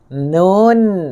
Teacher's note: Tengok bentuk hujung lidah tu berbeza. Dia terhasil apabila hujung sisi lidah di bawah tempat keluarnya huruf lam. Tempat keluar huruf lam tu diangkat dengan lebih dekat ke gusi gigi seri atas dan bersentuhan dengan lelangit keras.